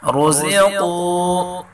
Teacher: را کو پر پڑھیں گے اور قاف کو بھی پر پڑھیں گے